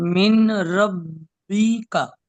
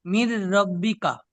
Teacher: সাকিনের পরে যদি তাসদিদ আসে তাহলে সাকিনটা মাঝখান থেকে বাদ চলে যাবে, ডাইরেক্ট তাসদিদ অক্ষরের সঙ্গে মিলিয়ে পড়তে হবে।